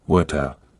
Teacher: In British English, it's more like water, with a clear T sound.